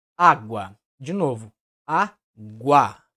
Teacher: O som começa menos intenso, sofre uma elevação da tonalidade e vai para o som mais forte. · Aqui na sílaba guá, temos um encontro da semivogal U com a vogal A, caracterizando um ditongo, certo? Note que a intensidade do som da semivogal U é bem mais fraca que a vogal A. Então, começa fraco e termina forte. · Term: ditongo crescente